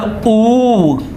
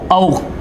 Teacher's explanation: तो जब होठ गोल हो जाए, एकदम गोल गोल हो जाए, तो उसे बोलेंगे वृत्त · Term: वृत्तमुखी